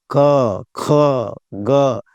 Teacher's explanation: अब देखिए, एक होता है जैसे कंठ से घर्षण किया, तो क होता है वो कंठ से उच्चारण होता है। क, ख, ग, ये कंठ है। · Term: कंठ वर्ण